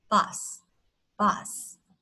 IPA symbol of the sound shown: ʌ